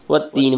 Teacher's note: تین تا پہ شد ہے اس لیے تا کو دو مرتبہ پڑھیں گے